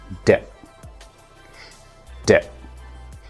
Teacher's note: It's a voiced sound, which means you will use your vocal cords, and it's also considered a stop sound. · You place your tongue right behind your upper teeth and try and say D, D, D.